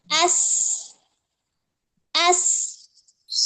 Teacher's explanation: Contohnya pada harfu sin, dia mempunyai sifat sofir, yang hams dan rokhwahnya nampak ya, nampak runcing di situ.